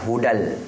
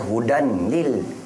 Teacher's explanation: lam dengan ro dibaca tanpa dengung